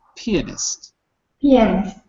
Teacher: So, the stress is not on the ah, it's on the e. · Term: The stress switches